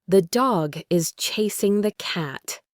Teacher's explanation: The stressed words are like the main beats in a song, da-dum, da-dum, da-dum. The unstressed words, the and is, are squeezed in between these main beats.